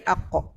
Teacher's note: Bila kita sebut qa, tebal, pangkal lidah kita akan terangkat. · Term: isti'la